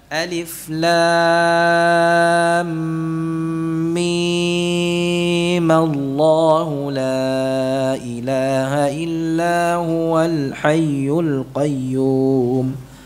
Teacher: Ya-nya mim dibaca 6 harakat. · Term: mad lazim